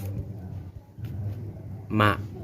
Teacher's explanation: dua perut bibir bagian tengah sehingga keluar huruf ma atau mim. Sifatnya yaitu satu, nafas ditahan jahar.